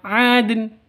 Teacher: Karena hurufnya qalqalah, maka dalnya harus dipantulkan seharusnya.